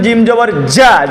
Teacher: জিব্বার মাঝখান থেকে শক্ত করে পড়তে হয়